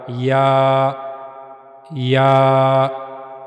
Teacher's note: जबान का दरमियानी हिस्सा मुंह के ऊपर वाले हिस्से की तरफ उठेगा। वहां से या अदा होगा।